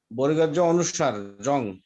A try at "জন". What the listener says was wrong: না, অনুস্বরে হবে না তো, দন্তন্য হবে।